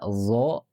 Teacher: ini keluarnya di ujung lidah bertemu ujung gigi atas